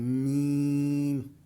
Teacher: میم کے اوپر ہم نے غنہ کرنا ہے، یعنی ناک میں آواز کو گھمانا ہے